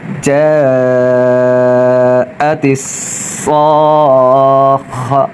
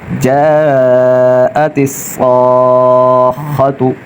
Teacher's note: جا، تا صاد زیر تس، تا کو صاد سے ملائیں گے، تا صاد زیر تس، صاد الف خا زبر صاخ، یہاں صاد الف اور خا تینوں کو ایک ساتھ ملائیں گے، صاد الف خا زبر صاخ، خا زبر خا، جاءت الصاخہ، صاد پر مشدد ہے اور خا مشدد ہے تو ان پر ذرا رک کر سختی سے پڑھیں گے اور صاد کی ادائیگی میں اس کو موٹا پڑھیں گے